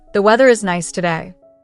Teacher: Once you find that small dog position, try to hold it and say a simple sentence like, "The weather is nice today." Notice how much more feminine the resonance is because you've shortened the tube that the sound is traveling through.